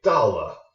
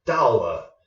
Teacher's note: so you can hear the fourth tone and then la is just fifth tone